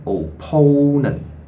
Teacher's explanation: with the Cantonese tones embedded inside, by starting with fourth Cantonese tone and then the first and then the fourth